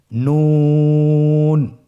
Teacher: একটি নোক্তা যদি থাকে তাহলে আমরা বুঝতে পারবো যে এটা হরফটি হলো নুন। নুন হরফটি উচ্চারণের ক্ষেত্রে অবশ্যই পাতলা করে উচ্চারণ করতে হবে এবং 3 আলিফ টেনে পড়তে হবে।